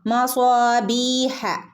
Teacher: മദ് അസ്ലി, 2 ഹറക്കത്ത് അവിടെ നീട്ടിയാൽ മതി കേട്ടോ. മസ്വാബീഹ. ഇവിടെ നോക്കൂ, യാ മദ്ദുണ്ട്, ബീഹ, ബി, യാ മദ്.